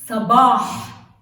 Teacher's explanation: this ha is when you clear your throat. Ha, it's a throat letter.